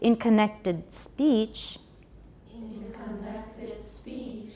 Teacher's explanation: Watch the D. In connected, we still need to voice that. We need that stop there.